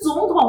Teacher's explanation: 那个总第二声，统第三声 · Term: 连音变调